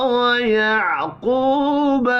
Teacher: قوف حروف مستعلیہ ہے، پر پڑھا جائے گا